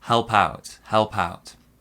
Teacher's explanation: our stress is on the second syllable.